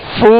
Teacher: جب مد کریں گے تو ہونٹوں کو گول کر دیں گے، جب اس کی حرکت پڑھیں گے پیش پڑھیں گے تو ہونٹوں کو گول کریں گے